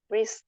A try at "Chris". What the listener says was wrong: Xì nhiều hơn tí nữa chị, kéo dài em tí nữa cho mình quen miệng.